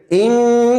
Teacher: دیکھیے زبان لاک ہو جاتی ہے اور آواز ناک سے نکلتی ہے، اور اس کی ہوا ناک سے خارج ہوتی ہے، آواز بھی ناک سے نکلتی ہے۔ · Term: نون